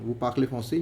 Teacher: Just raise the tone, and it would sound like a question. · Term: intonation